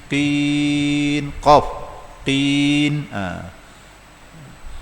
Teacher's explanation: Pangkal lidah kita terangkat. Itu isti'la.